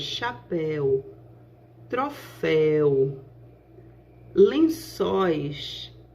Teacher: Essas três palavras, chapéu, troféu, lençóis, elas caracterizam uma sílaba, a última sílaba, que compõe um ditongo, que é composta por um ditongo de som aberto. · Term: ditongo aberto